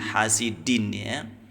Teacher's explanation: ujung lidahnya disentuhkan ke Pangkal gigi seri atas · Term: Dal